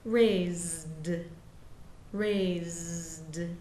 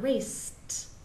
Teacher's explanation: don't let them take the voicing away from both of those last consonants